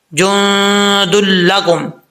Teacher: نون ساکن کے بعد دال آ رہا ہے حروف اخفا میں سے، تو یہاں پہ نون ساکن کا اخفا ہو رہا ہے